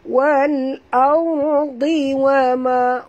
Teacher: huruf dhad apabila dia baris bawah juga kena baca tebal kerana dhad itu sifatnya isti'la, tebal. Kita tak boleh baca wal ardi, bukan di ya.